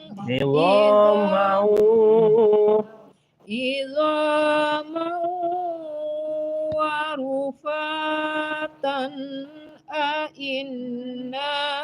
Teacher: Ini tan tuh nggak boleh dengung.